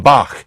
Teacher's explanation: there was also a nice velar fricative and so it's the sound in Bach